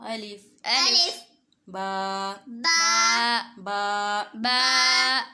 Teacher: الف زبان منہ کے خالی حصے سے ادا ہوگا · دونوں ہونٹوں کے اندر والے حصے کو آپس میں ملائیں گے تو با ادا ہوگا